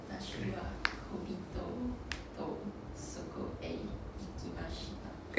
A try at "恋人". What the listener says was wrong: It's not 恋人 恋人. You need to pronounce the E. 恋人.